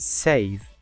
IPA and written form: seɪv (save)